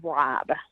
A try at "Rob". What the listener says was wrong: You sound Yeah, it sounded like that. Wob.